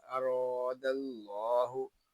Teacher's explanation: खींच कर भी पढ़ेंगे क्योंकि यहाँ अलिफ मद्दा हो रहा है। ला पा के लाम को हम पुर पढ़ेंगे क्योंकि ला पा के लाम से पहले हरफ के ला पा के पहले हरफ पर जबर है।